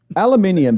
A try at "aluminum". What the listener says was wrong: It's aluminum. There's no second eye.